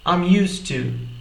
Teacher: Isso significa que a gente une o som da terminação da palavra used com a palavra to, soando I'm used to. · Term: connected speech